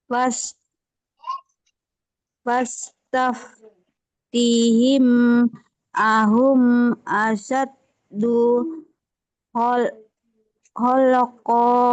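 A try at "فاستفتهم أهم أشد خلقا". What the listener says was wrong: Ho-nya kurang. Bukan holkon. Ho, holkon. Sekali lagi.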